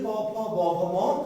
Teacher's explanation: প ফ ব ভ ম ঠোঁটে স্পর্শ করে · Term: ওষ্ঠ